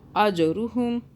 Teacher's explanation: जीम पे कलकला आ रहा है, झटका